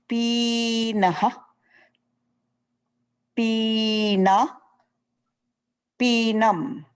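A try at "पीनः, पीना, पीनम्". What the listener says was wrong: I don't know why you are elongating the E. Are you doing it because you are thinking?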